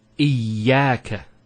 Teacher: Notice the ya gets a double vowel because of the shadda there. Iyaka. It's not iyaka, iyaka.